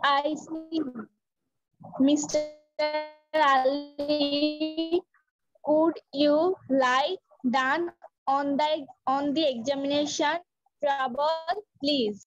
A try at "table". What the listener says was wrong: ট্রাবল না টেবল আর lie down এটা ডাউন ঠিক আছে ডাউন ওকে এগেন বলো